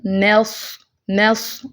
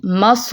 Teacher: میم کو لائٹ رکھیں گے، صاد کو موٹا کریں